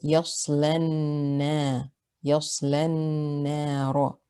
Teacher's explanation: we're going to drop the alif here as well and go straight from the lam with fatha to the noon with shadda